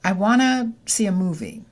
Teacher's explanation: Want to becomes wanna at a natural speed.